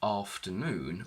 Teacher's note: If we look at the word afternoon, we will see that the primary or main stress is on noon, and this is shown in a dictionary by an apostrophe before the syllable that is stressed.